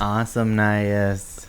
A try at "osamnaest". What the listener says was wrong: Awesome nice. So awesome nice, but it's osamnaest.